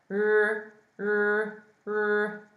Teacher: So it's similar to the English R, but the tongue's rolling back. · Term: retroflex